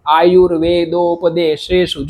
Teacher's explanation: તાલવ્ય એટલે જ્યાં આપણો ચ જ ઝ ય નીકળે ને ત્યાંથી આ સકાર નીકળે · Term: તાલવ્ય સકાર